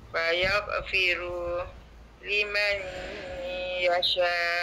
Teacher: sebab nak masuk huruf ya idgham maal ghunah. Dia kena baca ya.